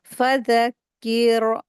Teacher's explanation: यहाँ पर रा साकिन है, इससे पहले जेर आया, तो यहाँ पे रा को बारीक करेंगे